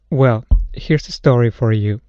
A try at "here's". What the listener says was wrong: I'm hearing an S sound instead of a Z on the end of here's. Well, here's a story for you.